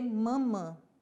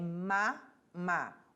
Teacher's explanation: O A sempre vai ser aberto e nunca vai nasalizar, mesmo que esteja seguido de um M ou de um N.